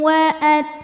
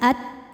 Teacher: dari segi suara syidah at kuat, makin ditekan makin tidak keluar tertahan bunyinya. Tapi dari segi angin ada anginnya. Anginnya juga sama belakangan keluarnya kalau taknya sukun.